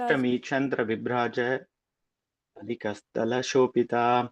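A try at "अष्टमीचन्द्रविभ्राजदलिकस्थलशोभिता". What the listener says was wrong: அது one word, pass பண்ணாத சொல்லுங்க.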